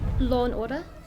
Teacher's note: But we never say the R on the end of order. She did not say the R, but she also did not add one.